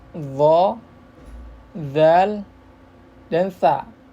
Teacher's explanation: ujung lidah pada posisi menempel di ujung dua gigi seri atas